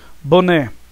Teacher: O né, que é a última sílaba, é a mais forte e é terminado em E. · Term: oxítonas